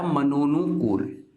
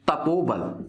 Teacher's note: तो विसर्ग के बाद स्वर आने से क्या परिवर्तन हुआ? विसर्ग का दोस्तों ओ हो गया